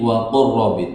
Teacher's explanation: Berikutnya ada huruf lam bertemu ro. Lam dengan ro makhrajnya berdekatan, disebut dengan idgham mutaqaribain. Aslinya waqul robbi menjadi waqur robbi.